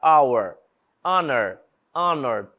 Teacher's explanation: repare que eu não tô pronunciando o h